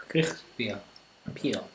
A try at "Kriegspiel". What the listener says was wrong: Your German pronunciation there. It's Krieg. It's I-E, not E-I.